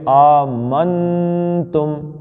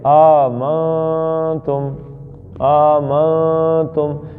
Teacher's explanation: نون آپ کے منہ سے نکلے یہ اظہار ہے، اور اخفا کیا ہے؟ آپ کے ناک سے نکلے تو یہ اخفا ہے۔ جب میں کہتا ہوں آمنتم تو آپ ایسے پڑھتے ہیں آگے سے آمنتم، منتم، زبان تالو سے نہیں لگانی۔